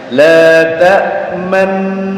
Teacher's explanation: Jadi memunyungkan bibir di tengah-tengah dulu di kalimat la ta'manna ya. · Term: ismam